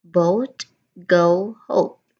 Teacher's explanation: This is another gliding sound because it's another diphthong. It starts open and then it closes a bit.